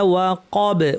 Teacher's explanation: ওয়াকাব বাতেও কলকলা করে থামবো।